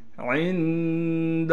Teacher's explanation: عین کو نون سے ملائیں گے اخفا یعنی غنہ کے ساتھ